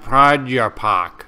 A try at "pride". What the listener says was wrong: you keep putting a you in there it's not pride you pock it's pride